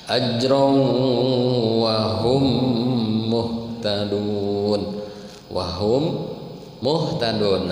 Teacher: ada mim mati lagi Pak, ketemu mim, namanya idgham mimi atau idgham mutamathilan. Idgham itu memasukkan, mutamathilan itu yang bersamaan hurufnya.